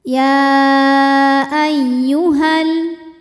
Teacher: Ya ayyuha jika berhenti. Namun jika diteruskan atau diwasolkan jadi pendek, madnya gugur, namanya takhallus bil hadfi.